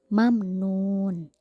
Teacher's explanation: mim mati bertemu dengan Nun maka harus dibaca jelas juga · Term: izhar syafawi